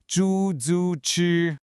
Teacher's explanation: All three of these characters are first tones, which means they're high and flat. The key is not to rush it.